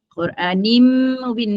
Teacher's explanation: Quranim bin nun, tanwin di bawah itu bertemu dengan mim, dia masuk terus jadi idgham ma'al gunnah dengan dua harakat